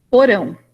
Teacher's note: uma intercalação de uma vogal para desfazer um grupo de consoantes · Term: suarabacte